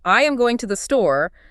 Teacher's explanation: the native ear really only cares about going and store. >> Because those are the action and the destination. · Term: stressed syllables